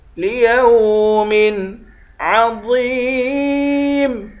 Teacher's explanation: واو کو یا سے ملا کر یا کو ایک الف کی مقدار کھینچیں گے، واو کو موٹا پڑھیں گے۔